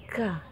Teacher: Jadi di pangkal lidah tapi sedikit ke bawah lagi dari qaf, dia keluar huruf yang namanya yaitu kaf, k.